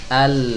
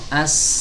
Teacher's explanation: huruf lam ketika seorang mengucapkan huruf lam, maka suaranya akan keluar dari sisi kanan dan sisi kirinya · Jadi suara huruf lam itu akan melenceng ke samping ila janibai tarfil lisan, ke dua sisi dari ujung lidah ke sini, sisi kanan ataupun sisi kiri. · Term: inhiraf